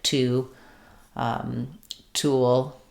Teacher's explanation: making sure that I have the puff of air t as I'm saying those words